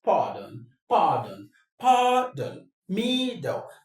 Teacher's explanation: The stress is on the first syllable. Why? The reason is the don is a weak syllable.